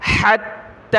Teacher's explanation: اسرا حتی یثخن، حتی زبر حتی کھڑا زبر تا، حتی، ہا کو تا کے ساتھ ملائیں گے، تا کے اوپر تشدید ہے، سختی کے ساتھ پڑھنا ہے